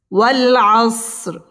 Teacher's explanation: ওয়াও আমরা ঠোঁট গোল করে উচ্চারণ করব। ওয়াল আসর, র এখানে পুর করে পড়তে হবে।